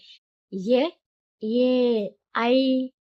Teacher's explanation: కంఠము మరియు తాలు గొంతు అంగిలి రెండింటి సహాయంతో పలికే అక్షరాలు ఏమంటారంటే కంఠతాలవ్యాలు అంటారు